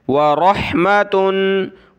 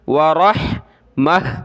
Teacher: گول تا جو ہے ہا میں کنورٹ ہو جاتی ہے، جب ہم رکتے ہیں وقف کرتے ہیں تو ہا بن جاتی ہے